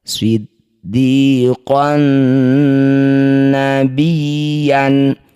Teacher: Fathah tanwin bertemu nun disebut bacaan namanya idgham bi gunnah. Bunyi fathah tanwinnya masuk pada nun, dengungkan 2 harokat.